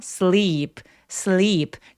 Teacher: 이 소리 굉장히 긴 장모음이라서 양옆으로 입술을 쫙 찢어주세요.